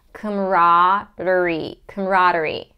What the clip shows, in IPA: ˌkɑməˈrɑː.dər.i